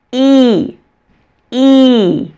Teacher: my mouth is much wider when I say the long e vowel in eat my lips are spread like I'm smiling when I say it my mouth is much smaller and relaxed